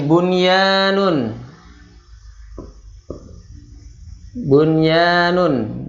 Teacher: nun sukun bertemu dengan ia tidak dibaca dengung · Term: izhar mutlak